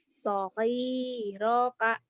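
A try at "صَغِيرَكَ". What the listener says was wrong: Kurang di rohnya. Sogiroka gitu.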